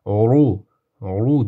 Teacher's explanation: Ru deb qo'shib tafxim qilib yo'g'on o'qiymiz